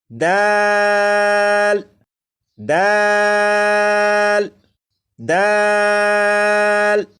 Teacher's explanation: دال کو 3 الف کے برابر کھینچ کر پڑھیں گے،